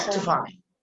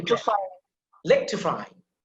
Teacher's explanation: The short E, that is unstressed. And it's almost silence. It's almost silent. Actually, you don't have to pronounce it in a sense.